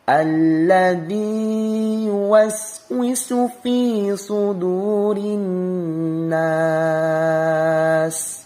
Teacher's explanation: Alladzi itu matobi'i, ladzi dibaca panjang dua harokat. Sa-nya jangan sampai ada pantulan.